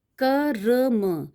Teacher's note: रा का साउंड बहुत कम टाइम के लिए आ रहा है, तो हम कर्म बोलने में रा आधा है।